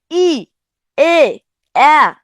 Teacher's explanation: জিভ কিন্তু সামনের দিকে থাকতেছে। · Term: সম্মুখ স্বরধ্বনি